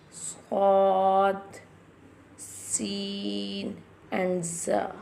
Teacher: These letters are pronounced like a whistle sound.